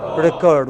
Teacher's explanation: When it is verb, it is the second syllable which is stressed, recurred. But when it is a noun, it is the first syllable which is stressed.